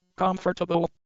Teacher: So the middle syllables are reduced.